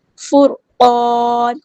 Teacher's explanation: قاف ہمارا heavy letter ہے، پورا ادا کریں گے